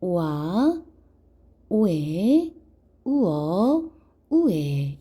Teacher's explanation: 오나 와 소리가 숨어있는 오아, 오에, 우어, 우에 이 친구들은 반모음 오우 계열의 이중모음이라고 이야기합니다